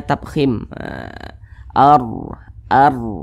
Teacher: huruf ra sukun sebelumnya tanda baca fathah maka huruf r-nya dibaca tebal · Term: ro sukun